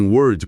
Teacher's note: Em word, palavra, o som é curto, você solta o R e pronto.